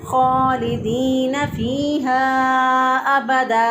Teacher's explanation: दो ज़बर की तनवीन जो है इस पर जब हम वक़फ़ करते हैं तो एक अलिफ के बराबर इसको लंबा करके पढ़ते हैं। तो अगर कोई ऐसा ना करे तो गलत पड़ेगा।